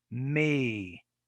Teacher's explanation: so basically with the with the e it's a tense it's it's a tense vowel it's longer the tongue is harder i think it's higher in the mouth